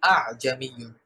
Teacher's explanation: এই যে সহজ করে বা হালকা করে উচ্চারণ করা এটাকেই মূলত আরবরা তাসকিল নামে অভিহিত করেছেন। অর্থাৎ দ্বিতীয় যে হামজাটা আছে এই হামজাটা প্রথম হামজার ন্যায় এতটা বেশি শক্ত হবে না। বরং প্রথম হামজার তুলনায় দ্বিতীয় হামজাটা তুলনামূলক হালকা হবে। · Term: তাসহিলুল হামজা